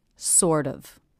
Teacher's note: link the D to the next word, which begins with a vowel, sort of, so it sounds more like one word than two separate units. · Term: flap T